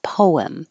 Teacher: You can pronounce it like two syllables, poem. Your lips should round and then unround and make the invisible W, poem. Or just a single syllable, poem.